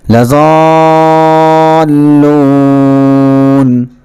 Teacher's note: اس سے پہلے آپ نے بارہا پڑھ لیا تھا کہ اگر الف سے پہلے زبر ہو تو اس کو حرف مدہ کہتے ہیں، اور وہ ہوتا ہے الف مدہ، اور اس کو ایک الف کے برابر کھینچتے ہیں۔ لیکن حرف مدہ کے بعد یہاں پر لام ہے اور لام پر تشدید ہے، لہٰذا اب اس کو اور زیادہ کھینچیں گے اور اس کو مد لازم کہیں گے، لضالون، اس طریقے سے۔